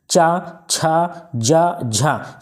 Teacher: च छ ज झ ये तालव्य होता है ये स्पर्श संघर्षी व्यंजन भी कहलाते हैं तालू से बोले जाते हैं